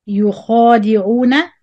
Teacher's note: The خا is heavy. Make the خا heavy. The rest of the word light.